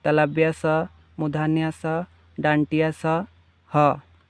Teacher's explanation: ऊष्म का अर्थ होता है गर्म। ऐसे वर्ण जिनका उच्चारण करते समय वायु मुख से रगड़ खाकर ऊष्मा पैदा करती है उसे ऊष्म व्यंजन कहते हैं।